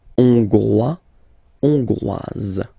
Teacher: final S not pronounced for the masculine form, and then you pronounce it here for the feminine form